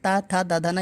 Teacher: जबान दांत में लड़ रही है, दांत में, तो ये दंत से बोले जाते हैं